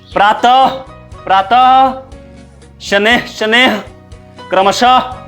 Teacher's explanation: इन शब्दों के अंत में विसर्ग लगा है, विसर्ग का उच्चारण ह के समान होता है